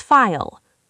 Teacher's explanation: File has a long I sound followed by a dark L. Your tongue stays flat at the back.